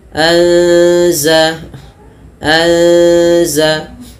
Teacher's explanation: Kemudian faanzalna anza anza ya ada mati bertemu za kita namakan dengan ikhfa. Cara membacanya itu huruf nunnya samarkan kepada huruf zalnya langsung. Kemudian berfal na mad thabi'i.